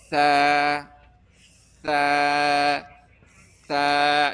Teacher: د ژبې سر به غاښونو سر له راوړو نو دې له به ثا ادا کېږي. ثا ثا ثا نرم حرف.